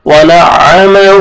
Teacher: ہا کو ایک الف کے برابر کھینچنا ہے الٹا پیش ہے